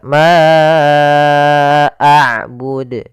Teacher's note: sebagaimana tadi laah yaitu adanya Hamzah yang datang setelah huruf mad kita panjangkan untuk huruf Ma panjangnya empat harakat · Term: Mad Jaiz munfasil